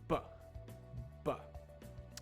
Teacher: So V and B are very similar sounds. However, the B sound is made when you stop air with your lips